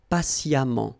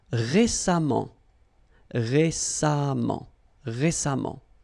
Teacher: even if you write it EMMENT, phonetically it goes like amant